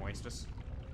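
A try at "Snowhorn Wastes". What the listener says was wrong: It's Waste, not Wastus. The way you say it, Wastus, it sounds like you're a kid saying racist.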